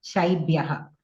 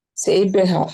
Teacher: And your shakara also, you are pronouncing like sakara.